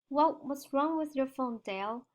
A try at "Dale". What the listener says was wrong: Okay, try to pronounce Dale with an A sound. Dale. Because if you say Dell, Dell's like Dell computer, Dell. But this is Dale.